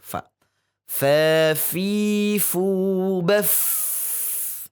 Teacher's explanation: untuk pelafadzan fa dari batnus syafah, perut bibirnya